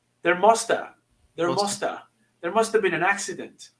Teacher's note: I would strongly recommend you to omit or to drop the V sound